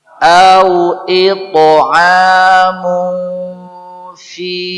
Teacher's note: Kalau ini lebih dekat ke em. Ikhfa pada huruf fa itu lebih dekat kepada em.